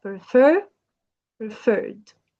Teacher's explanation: prefer is like two syllables verb, and the stress is on the second syllable